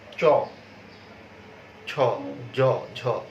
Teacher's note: এই অগ্রতালু থেকে কিন্তু আবার তালব্য বর্ণগুলো উচ্চারিত হয়, যেমন চ, ছ, জ, ঝ।